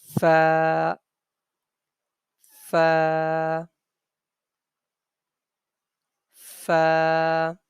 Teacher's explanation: it is pronounced from the front teeth and bottom lip when the front teeth touches and presses the bottom lip then the sound of fire comes out like fur fur got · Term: pha